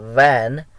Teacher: in the production of the v sound, v as in van, there is a partial closure. Closure is there, but partial closure uh, in the production of that particular sound.